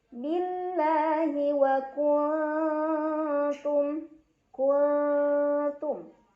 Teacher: Cara bacanya, nun sukun dibunyikan samar-samar ke huruf ta sambil dengung. Ini samarnya masih besar dibandingkan dengungannya karena aqrab ya. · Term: ikhfa aqrab